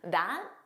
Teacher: It was more of a that. So you just don't press out that final T